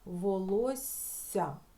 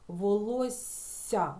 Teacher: це слово у нас в записі має подвоєну букву F але коли ми вимовляємо це слово то у нас виходить один довгий м'який звук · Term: подовжений М'який приголосний звук